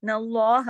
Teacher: युखादिऊन अल्लाह, इस तरीके से, न अल्लाह, अल्लाह के नाम से पहले ज़बर है, अल्लाह के नाम का लाम اسم جلالہ کہلاتا ہے یہ، چونکہ اللہ کا نام ہے تو اس کو ہم موٹا پڑھیں گے، لیکن ہا کو موٹا نہیں پڑھیں گے، لاسٹ والا ہا باریک ہی رہے گا اور ایک حرکت ہی رہے گا، زیادہ کھینچیں گے بھی نہیں۔